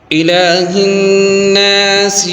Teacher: یہاں پر لام کے اوپر کھڑی حرکات ہے، ایک الف کھینچیں گے